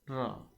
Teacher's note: उसके बाद आ जाता है लुंठित, आप इनको बोल के देख सकते हैं, आपको पता लग जाएगा। लुंठित, जीवा की नोक बेलन की तरह लपेट खाकर तालु का स्पर्श करती है और जीवा की नोक वर्ष पर बार बार ठोकर मारती है, तो ये क्या है, र।